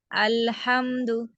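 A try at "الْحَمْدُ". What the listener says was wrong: आप बाहर आ गए मखरज से बाहर आ गए आप, मेरे पीछे पड़े। अल्हम्दु। आपने ये जुबान का जो किनारा है उसको, लाम का मखरज क्या है? नहीं सुनाया अलिया नहीं, ऊपर के 8 दांतों के गम एरिया पे लगता है, यानी कि मसूड़े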